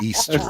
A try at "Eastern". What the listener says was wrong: You're adding that. You're adding extra syllables.